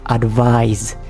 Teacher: Z sound. There is a buzzing Z sound at the very end of the word.